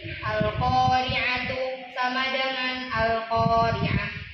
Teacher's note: ta marbut ketika diwakafkan dia berubah jadi huruf H. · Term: Ta marbutoh